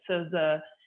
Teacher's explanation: in American SZ, your tongue is back at that alveolar ridge